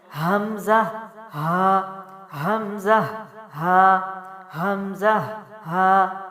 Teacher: حلق سے ہوتی ہوئی یہ آواز سینے کی جانب سے نکلے گی، جس کو ڈاؤن تھروٹ کہا جاتا ہے۔